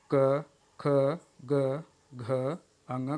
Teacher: क, ख, ग, घ का उच्चारण जो है सॉफ्ट पैलेट से होता है। तो इसका उच्चारण स्थान सॉफ्ट पैलेटल है। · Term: कोमल तालव्य